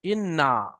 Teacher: এখানে এই যে প্রথম একটি লাইনের মধ্যে, প্রথম আয়াতটির মধ্যে ইন্না, ইন নুন মুসাদ্দাত অর্থাৎ নুনের উপরে তাসদিদ আছে, এখানে এক আলিফ পরিমাণ গুণনা করে পড়তে হবে